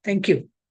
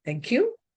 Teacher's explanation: The fall in the tone means formality. Just for the sake of formality, you say, thank you.